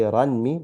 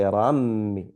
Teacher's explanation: So we're not going to say ranmi, we're going to say rammi. We incorporate the nun sakin into the meem. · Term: idgham